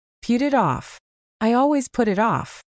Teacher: the T sounds at the end of put and it actually change into soft D sounds because they are sandwiched between vowels. So instead of saying put it off like a robot, you blend it all together.